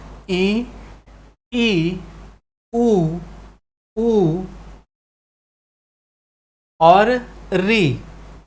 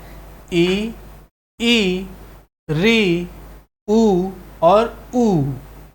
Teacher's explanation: जिह्वा अपनी अधिकतम ऊंचाई पर होता है और मुख जो है वो बंद की स्थिति होती है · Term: संवृत स्वर